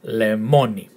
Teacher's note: The emphasis in the second syllable. Lemoni. And it's lemon in Greek.